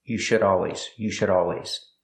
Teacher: The D in should is a fast D. It's between vowels.